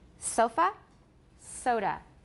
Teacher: it's called a schwa and unstressed vowel and reduced and it occurs at the ends of words like sofa soda